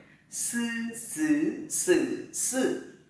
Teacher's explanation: Âm này thì gọi là âm đầu lưỡi. Thì đầu lưỡi sẽ cắm vào mặt sau và lên trên.